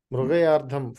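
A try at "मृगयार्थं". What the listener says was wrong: No, from this level, try to pronounce this as tha. I know it's a very, very Andhra influence, Telugu influence to say tha as dha. By your mind is conditioned by that.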